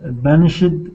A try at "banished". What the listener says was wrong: So first of all, I'll point out this word, when you use it in the past tense, don't add that extra syllable. So just say banished, banished.